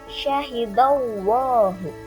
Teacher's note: dibacanya tebal dan rongga mulut kita agak maju syahidallahu Dorong ke depan syahidallah begitu pula apabila harakat sebelum lafaz